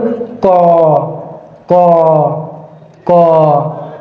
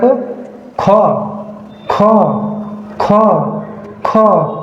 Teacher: আমি যদি খ উচ্চারণ করি তাহলে কি হয় দেখ খ অর্থাৎ যতবার খ উচ্চারণ করব ততবার আমার মুখের সামনের কাগজটি সরে যাবে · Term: মহাপ্রাণ